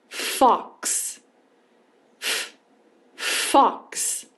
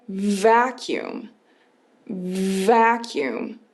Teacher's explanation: A gente pega o som do V pra gente comparar, pra gente entender que o F é um som sem voz. E a gente vai comparar o som do V, que é um som com voz.